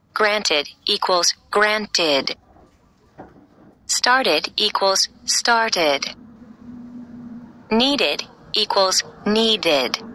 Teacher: After a verb ending with the letter D or T, we hear the syllable ud.